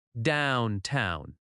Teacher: Downtown has stress on down